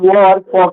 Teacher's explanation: दंत और ओस का यूज होता है जब हम वो और फ का यूज करते हैं